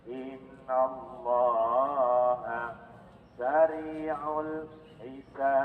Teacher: Ini namanya qalqalah kubro, makanya pantulannya sangat jelas panjang.